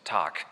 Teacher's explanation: So, wenn Sie sich die angucken, dann sehen Sie genau das, nämlich prototypisch den Fall, dass sich die Sprechwerkzeuge öffnen, also T ist Verschluss, dann kommt A, ist Öffnung, dann kommt K, ist wieder Verschluss, Tag. Und dann machen Sie einen Verschluss, dann machen Sie auf und dann machen Sie wieder einen Verschluss. · Außerdem geht der Stimmton an und wieder aus, weil Sie haben in der Mitte immer ein Vokal.